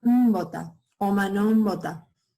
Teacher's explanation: Podemos ver que el fonema P en los contextos nasales cambia a B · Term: proceso de nasalización